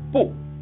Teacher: 不这一个字我们单念或者在词句的末尾，在阴平阳平的赏声字前我们都要读原调，也就是去声